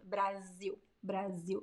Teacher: strong Z sound Brazil Brazil but I write it with as the s sounds like Z between two vowels in Portuguese